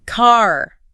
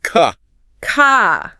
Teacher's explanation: in British English, that R at the end of the word often softens or disappears completely. So car becomes more like ka.